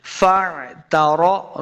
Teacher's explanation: ہیں فَاعْتَرَفُوا، عین کو لفظ کے ساتھ پڑھنا ہے، فَاعْتَرَفُوا یعنی حمزہ نہیں پڑھنا، عین کا ساؤنڈ آنا چاہیے